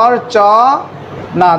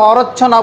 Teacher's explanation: রেফের পর যে ব্যঞ্জন বর্ণটি থাকবে সেটা কখনো 2বার উচ্চারণ করা হবে না